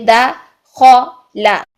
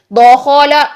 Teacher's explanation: अब बारीक, दो बारीक हरूफ के दरमियान एक मोटा हर्फ आ गया है खौ। हमने खौ को मोटा रखना है औ की साउंड में, लाम को और दाल को बारीक रखना है।